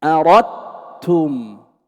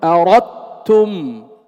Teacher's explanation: هل تسمع للدال أثر ظاهر؟ أردتم، إذا لا تسمع شيئا للدال، إنما تسمع تاء مشددة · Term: إدغاما كاملا